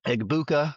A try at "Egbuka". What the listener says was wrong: Ibuka. The G is silent, by the way. It's Ibuka.